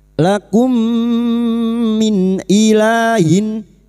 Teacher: mim sukun bertemu mim, idgham mimi, memasukkan atau mentasdidkan dua mim masuk pada huruf mim berikutnya disertai mendengung selama 3 harokat. Lakum min ilahin, nun sukun bertemu hamzah.